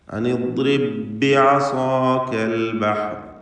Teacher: സാക്കിനത്ത ബായിനെ ശേഷമുള്ള ബായിൽ ലയിപ്പിക്കുന്നു. ഷദ്ദുള്ള ഒറ്റ ബാക്കി ഉച്ചരിക്കുന്നു. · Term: ഇദ്ഗാം മുതമാസിലൈനി സഗീർ